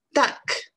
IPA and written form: dʌk (duck)